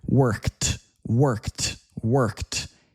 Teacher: in American English, an e d ending can sound like a t